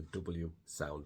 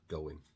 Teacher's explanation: It's with the W sound, the W sound between go in, going, and then the Y sound.